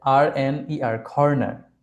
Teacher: সি এর যখন hard sound হবে তখন ক এর জায়গায় খ উচ্চারণ করবেন